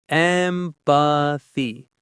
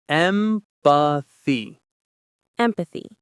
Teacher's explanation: The stress is on the first syllable, M. Listen to how the th sound is made.